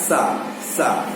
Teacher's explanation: जब दंत सकार कहेंगे तो क्या कहेंगे, दांत जीभ का मेल होना चाहिए